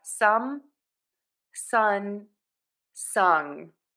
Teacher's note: The airflow for all of these sounds is going to come out of your nose.